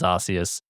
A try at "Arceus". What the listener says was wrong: I like how you're saying it like arse. Arceus. Keep saying arse though.